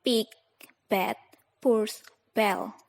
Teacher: The plosives have different places of articulation. First, p and b are bilabials. The lips are pressed together.